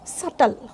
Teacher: In this particular word, b is silent.